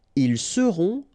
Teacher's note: final T not pronounced